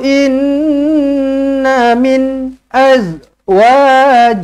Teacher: nun sabdu wajibul gunna, dengungkan 2 harakat. Inna jangan kurang daripada 2 harakat. Inna min tak cukup.